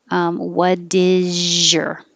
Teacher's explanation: So the T changes to a D, and the S, what is your, is really a Z, is. So the Z and the Y next to each other changes to a J.